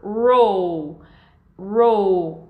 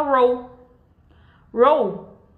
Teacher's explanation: o L, ele é longo, enquanto o U, ele é mais curto